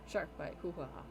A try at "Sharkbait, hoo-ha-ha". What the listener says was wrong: Sharkbait, hoo-ha-ha. Yeah, not Sharkbite.